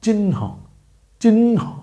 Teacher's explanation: উচ্চারণের ক্ষেত্রে আগে আছে ন, আর পরে হালকা করে আছে হ